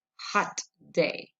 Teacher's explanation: the first plosive held briefly then exploded as part of the second one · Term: plosive to plosive